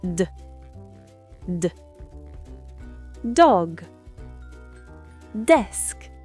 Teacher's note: Le D se prononce avec le bout de la langue contre les gencives supérieures.